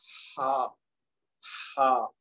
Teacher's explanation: ہا جو ہے یہ وسط حلق سے ادا ہوگا